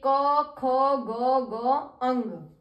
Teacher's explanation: सारे प्रकारों को हम विस्तार से पढ़ेंगे पहला है कंठ व्यंजन जिन वर्णों का उच्चारण कंठ की सहायता से होता है या कंठ के द्वारा होता है उन्हें कंठ व्यंजन कहते हैं क वर्ग में आने वाले व्यंजन कंठ व्यंजन कहलाते हैं जैसे